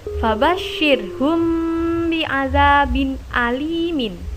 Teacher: Karena ikhfa syafawi adalah setiap mim sukun bertemu ba, sehingga bacaannya berkumpul di 2 bibir. Cara membacanya memasukkan ke dalam huruf setelahnya seperti berharokat tasydid.